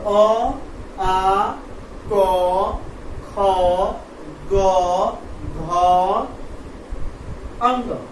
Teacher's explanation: इसका दबाव कहाँ पड़ता है तो हमारे कंठ पे पड़ता है